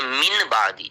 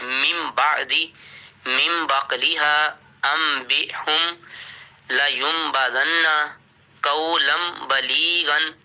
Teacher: ہم نے نون کو جو آواز ہے میم کی آواز میں بدل دینا ہے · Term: اقلاب